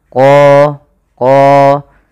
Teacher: huruf qa ini harus kita tebalkan qa, karena dia punya sifat huruf isti'la.